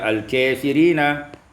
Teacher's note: diimalahkan fathah kaf dan alif, menjadi al-kafirina